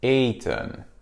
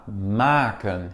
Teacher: voyelle, consonne, voyelle, ça fait que la première voyelle soit prononcée de manière longue. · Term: voyelle longue